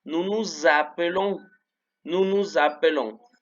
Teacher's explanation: como termina en S y la siguiente palabra empieza con A, la S se va a pronunciar como habíamos dicho, como Z. Acuérdense que era como un zumbido de abeja. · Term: liaison